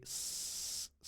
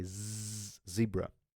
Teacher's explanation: you say s s sound the S sound you can touch your vocal cords they're not vibrating at all right but when you say Z zebra you can touch your vocal cords and you will see there is a definite vibration